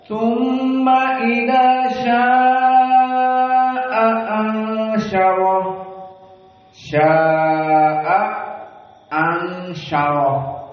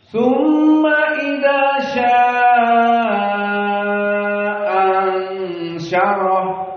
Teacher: hamzah yang pertama dibaca tahqiq dan hamzah yang kedua dibaca tasheel